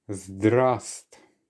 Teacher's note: The first one actually contains the silent letter V, so we actually pronounce it as zdrast.